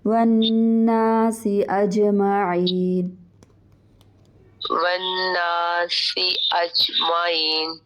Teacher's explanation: ایک تو نون کے اوپر غنہ ہوگا، پھر آگے الف مدہ ہے